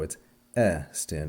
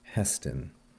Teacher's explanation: here we have an epsilon with a spiritus lenus, a smooth breathing, once again, and so it's stin and not hestin.